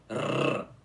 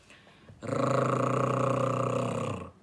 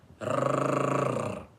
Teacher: esse som de R, que é forte, é pronunciado com a língua enrolada, vocês entenderam? Colocando a língua no céu da boca e depois tremendo ela em cima. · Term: som forte do R